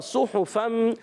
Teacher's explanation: حرکات، مگر پیش کی حرکت ہے، حرکات کو کھینچنا نہیں ہے، اور پیش دونوں پیش آئیں گے تو ہونٹ گول ہو جائیں گے. صحفم تنوین کے بعد میم ہے, ادغام مال غنہ کا قاعدہ, پھر ادغام مال غنہ جائے, اور یہاں پر تنوین کے بعد میم آ رہا ہے, ادغام مال غنہ ہوگا.